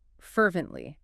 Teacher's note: Three syllables. Stress on the first.